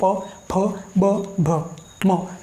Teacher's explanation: और फिर अंतिम बचता है प वर्ग, और प वर्ग का उच्चारण स्थान होता है ओष्ठ। ओष्ठ यानी कि होंठ, और इनके उच्चारण आपके होंठ से निकलते हैं